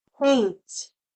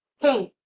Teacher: So you're not going to hear my voice making the sound, but you hear the air.